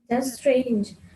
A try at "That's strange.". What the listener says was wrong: لا شدي في strange. شدي elongated شديها. That's strange.